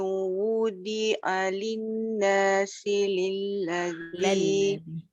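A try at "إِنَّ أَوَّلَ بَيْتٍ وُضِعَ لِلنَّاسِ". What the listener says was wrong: Gabur dia punya baris tu. Cumanya tadi dah betul baris wu, tapi dia mesti dengung tu, kena ada. Dia dua tempat. Inna satu, baitin wudi'a linna. Ada 3 dengung kat situ. wudi'a linna. Semua dengung.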